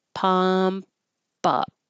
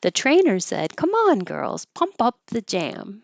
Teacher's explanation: And you have pump up. You will hear the P when it's followed by a vowel, so you release the airflow.